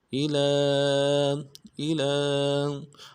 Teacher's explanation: لام کے اوپر کھڑا زبر ایک الف دال میں کھینچیں گے